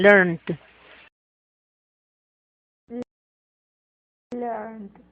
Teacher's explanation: como termina en una N, ese ED lo vamos a pronunciar como una D.